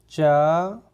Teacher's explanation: ऐसे व्यंजन जिनको उच्चारित करते समय हमारी जबान का अगला वाला भाग ऊपर कठोर तालु को स्पर्श करता है। कठोर तालु यानी कि आगे जो हमारा मसूड़े होते हैं उससे ऊपर वाला जो हिस्सा होता है उसे हम कठोर तालु बोलते हैं। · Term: तालव्य व्यंजन